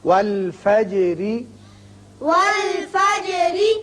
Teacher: جیم پر اس کی صفت قلقلہ ادا کریں، اور جب را کے نیچے زیر پڑیں گے تو را باریک ہوگا آگے ملانے کے لیے.